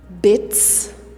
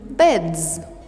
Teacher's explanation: Now that you know that s is voiceless and z is voiced, it's easy to understand why, for example, we pronounce bit, bits, but bed, to beds.